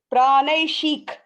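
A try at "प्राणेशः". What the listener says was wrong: Ik kadiyadu. It's a h. Praneshih. So it's a she, right? So it's a she. Now think of it as shee, she, right? And then put a h at the end of it.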